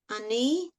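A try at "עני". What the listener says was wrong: word is pronounced oni. I think it has a kamatz, and I think I put a patach. It's oni.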